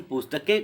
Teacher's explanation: अब पुस्तक का बहुवचन जब हम पुस्तकें कर रहे हैं तो के ऊपर आप देखें के का उच्चारण करते समय आप महसूस करेंगे कि जो ध्वनि है वह नाक और मुंह दोनों से निकल रही है